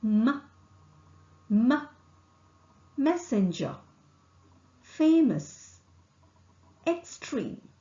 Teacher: Air is not allowed to escape through the mouth. The soft palate is lowered and the air escapes through the nasal passage.